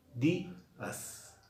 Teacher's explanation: Y cuando digo días, también estoy poniendo un énfasis en la sílaba di. Días. En ambos casos estamos acentuando. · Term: acento ortográfico